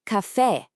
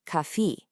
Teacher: a nice bright open e sound.